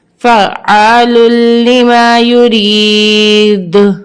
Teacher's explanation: وقفا فعال لما یرید. اب وقفی صورت میں ہماری آواز پلٹ کر آئے گی کیونکہ دال حروف قلقلہ کے حرف میں سے ہے